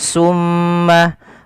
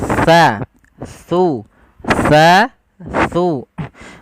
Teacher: makhrajnya ujung lidah kita menempel dengan gigi seri atas kita